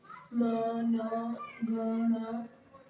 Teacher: इन्हें नासिक वर्ण भी कहते हैं, मतलब नाक से अधिक बोले जाते हैं।